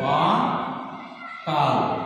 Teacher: অ এর উচ্চারণকালে আমার চোয়াল বেশি ফাঁক হয়ে যাচ্ছে, ঠোঁট গোলাকার হচ্ছে না, এটাকে আমরা বলছি অ এর বিবৃত উচ্চারণ